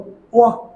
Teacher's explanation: জিহ্বাটি high back থেকে mid central যাবে আর প্রথমে রাউন্ড হবে তারপরে রাউন্ড কমে যাবে।